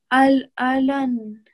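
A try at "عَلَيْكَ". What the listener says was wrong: Alay. So you don't read the noon sakin, you're going to join straight to the ya mushaddid.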